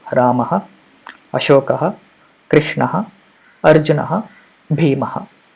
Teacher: The Visarga means the two dots at the end of the word, and the pronunciation of that Visarga generally will be a repeated pronunciation of the previous vowel